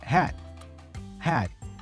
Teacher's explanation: So notice that the D for had is pronounced as a stop consonant.